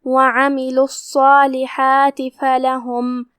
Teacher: حا کو حلق کے درمیان والے حصے سے ادا کرنا ہے · کلمت الصالحات میں یہاں حرف الصاد ہے اور اس پہ تشدید ہے لہذا ہم تشدید سے اور صاد کو بھاری آواز میں پڑھیں گے کیونکہ وہ حروف تفخیم میں سے ہے. پھر مد طبیعی ہے لہذا اس کا دھیان رہے ہم 2 حرف کی مقدار میں اپنی آواز لمبی کریں گے. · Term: حرف الحا